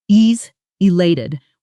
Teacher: the stress landing hard on the lelay sound in elated